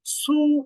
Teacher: কিন্তু সদ পেশ সু মুখটা একবারে গোল করে সু